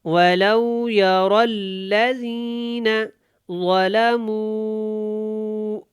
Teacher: مو یہاں پہ کھینچیں گے کیونکہ یہاں پہ مد ہے اور ضا کو موٹا پڑھیں گے